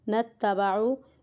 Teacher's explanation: نون مشدد پر ہمیں یہاں پر غنہ کرنا ہے